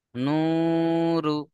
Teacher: র এর উপরে পেশ আছে একে হারাকাত বলে হারাকাতের পড়াকে তাড়াতাড়ি পড়তে হবে টান দেওয়া নিষেধ যেমন নূরু হ্যাঁ প্রথম অবমাকে এক আলিফ টান দেবেন তারপরে এসে রকে টান দেওয়া যাবে না।